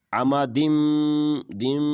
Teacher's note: یہاں پر ہم ادغام کریں گے غنہ کے ساتھ